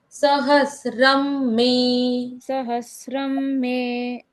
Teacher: क्योंकि ऊपर अनुस्वार है तो उस अनुस्वार का उच्चारण आधा म होता है।